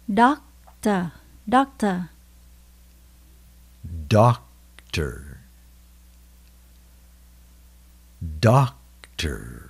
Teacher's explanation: Doctor là bác sĩ y khoa. Mình nhấn âm đầu tiên.